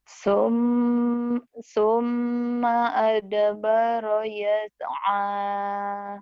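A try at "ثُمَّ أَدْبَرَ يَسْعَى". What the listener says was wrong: kurang, tahu ya kurangnya di mana? Saknya, saknya kurang cedal, kurang cadel. Summa, sak, kurang cadel.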